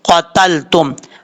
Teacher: قاف حروف مستعلیہ میں سے ہے، پر پڑھا جائے گا۔ دو نقطوں والا جو قاف ہوتا ہے یہ پر پڑھا جاتا ہے، اس کا مخرج ہے زبان کی جڑ اوپر والے تالو کے نرم حصے سے لگے تو قاف پڑھا جاتا ہے، قاف قاف، اس طریقے سے۔